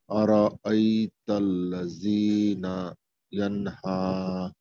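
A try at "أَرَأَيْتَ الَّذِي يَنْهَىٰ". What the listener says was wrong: আল্লাযী না নাই, হ্যাঁ আরাআইতাল্লাযী ইয়ানহা,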